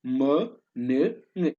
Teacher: The nasal sounds are three in English: m, n, ng. The air is sent out through the nose.